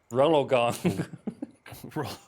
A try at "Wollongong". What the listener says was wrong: Rolla? Where did that R come from? Rolo. That's a candy. That's